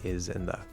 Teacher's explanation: you're going to slide from the z into the th and you have to control that